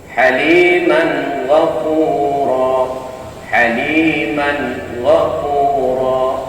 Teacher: Jadi tanwinnya di situ dibaca jelas menghadapi ghin ya.